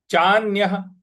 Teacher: तथैव चान्यः, चान्यः, चा के बाद जो न है उस पर हमको आघात देना है, और य के बाद जो विसर्ग है उसके आगे कुछ नहीं लिखा है, इसलिए उसका उच्चारण हमको ह ले आना है।